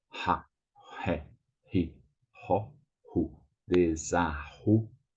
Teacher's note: And there are two R's. Two R's, there's this strong sound like an H sound.